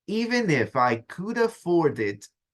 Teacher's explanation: Están conectadas las últimas consonantes con la siguiente vocal.